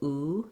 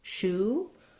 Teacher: So that's just a tense rounded vowel, oo. You can try shoe.